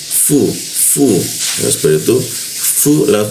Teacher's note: bibir bawah itu bertemu gigi dia fu